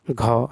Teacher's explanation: कंठ महाप्राण घोष व्यंजन वर्ण का उदाहरण घाव है